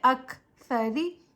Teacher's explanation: را کے نیچے زیر ہے، زیر کو ہم بغیر کھینچے بغیر جھٹکا دیے معروف متوسط طریقے سے پڑھیں گے، اور را کے نیچے زیر آنے کی وجہ سے ہم را کو باریک پڑھیں گے، جیسے را زیر ری، پیچھے سے ملا کر پڑھیں اک سری۔